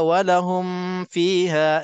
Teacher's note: Bibi mulut Fa di bibir mulut kan jadi nak kena jaga-jaga mim mati bertemu dengan Fa walaupun yang izhar syafawi tak boleh dengung kalau kita tak jaga-jaga dia senang untuk kita dengung di sini